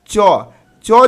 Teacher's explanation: जो है ये हो जाएगा अघोष वर्ण